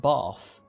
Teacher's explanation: The point of articulation simply shifts forward from an interdental to a labiodental in a change known as fronting.